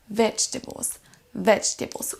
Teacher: Oubliez le E, on ne l'entend pas.